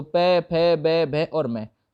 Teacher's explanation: प वर्ग को ओष्ठ नाम देते हैं, जहां पे ध्वनि जो है वो आपके होठों को स्पर्श करके निकलेगी, है ना, दोनों होठों को।